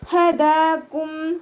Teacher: മഖ്റജ് അഖ്സൽ ഹൽക്കാണ്, തൊണ്ടയുടെ അവസാന ഭാഗം. അവിടെ നിന്ന് തന്നെ സൗണ്ടിനെ കൊണ്ടുവരാൻ ശ്രദ്ധിക്കുക. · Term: ഹ അക്ഷരത്തിൻ്റെ സൗണ്ടിനെ